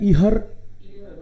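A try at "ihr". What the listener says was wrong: इसको नहीं पढ़ना है ना, बीच में एच आए तो साइलेंट रखना है उसको,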